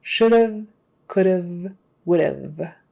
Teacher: So just pronounce the word would, should, or could, and then immediately go into a V sound with your teeth on your lower lip and voicing it. The V sound.